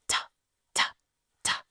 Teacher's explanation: You're not going to press hard like duh but tuh tuh tuh. Notice in English that there's a lot of air when we do the tuh sound.